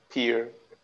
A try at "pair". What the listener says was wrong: This is not peer. This is pair, just pair.